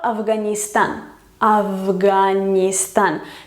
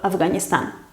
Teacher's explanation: La F se hace sonora y se convierte en V